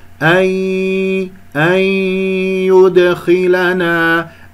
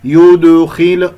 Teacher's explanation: ولا تسحب ضمة الياء إلى الدال الساكنة